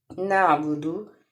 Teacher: آئین کو ہم حلق سے نکالیں گے جیسے ہا اور آئین یہ دونوں جو ہے ان کا مخرج ایک ہی ہے